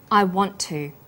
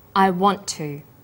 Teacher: is held slightly longer on the tongue then tu is pronounced that t sound is pronounced only once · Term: consonant plus same consonant linking